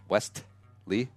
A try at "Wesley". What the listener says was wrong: You hardly pronounce the T. Something like that.